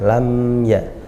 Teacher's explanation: Lam ya, jangan ditekan, jangan didengungkan karena izhar